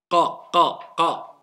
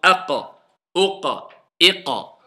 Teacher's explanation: la racine de la langue doit monter et toucher le fond du palais. Qa. La racine de la langue, c'est-à-dire le début de la langue, tout au fond de la langue. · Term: la lettre qaf